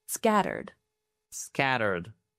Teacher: Put the stress on the first syllable.